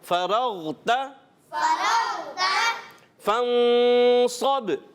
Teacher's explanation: فَإِذَا فَرَغْتَ، پیارے بچوں اس میں را کو ہم پر کریں گے، جب کبھی را پر زبر اور پیش آئے تو را کو موٹا کرتے ہیں۔ غین کی ادائیگی عرف مستعلیہ سے، اس کو بھی ہم نے موٹا کرنا ہے۔ فَرَغْتَ فَانصَبْ، یہاں پیارے بچوں اخفا کا غنہ ہوگا، یعنی ناک میں آواز لے کر جائیں گے، غنہ کریں گے، اور صاد کو پیارے بچوں عرف مستعلیہ میں سے ہے اور بہت زیادہ موٹے پڑے جانے والے حروف میں سے، اس لیے اس کو موٹا پڑھیں گے۔